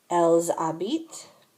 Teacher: The ENT ending is silent, which is why the verbs in the boot all sound the same.